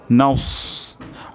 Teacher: আমরা ঠোঁটকে গোল করব যদি আমরা ঠোঁটকে গোল না করি তাহলে কিন্তু এটা সিন হয়ে যাবে